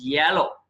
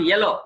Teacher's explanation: ఇక్కడ యా sound వస్తుంది, ఏ కాదు. ఏ అంటే ఏ ఎల్లో, యాన్ యాన్ ఎల్లో అనొచ్చు, but it is not ఎల్లో, it is యాలో.